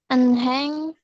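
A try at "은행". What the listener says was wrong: Bacanya jangan enheng ya, tapi eneng. Jadi kalau huruf hiet terletak di antara huruf yang lain, itu nggak usah dibaca, nggak apa-apa ya. Eneng.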